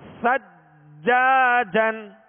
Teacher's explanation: جیم پر تشدید ہے, جیم حروف ہے قلقلہ میں سے لہذا خوب جمع ہوگا